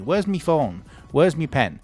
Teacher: this is a very northern thing as well. Instead of saying my, we say me.